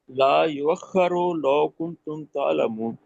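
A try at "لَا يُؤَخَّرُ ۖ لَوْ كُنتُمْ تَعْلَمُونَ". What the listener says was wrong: نہیں، لا یؤخر کے بعد میم ہے، یہاں تو لازم ہے وقف۔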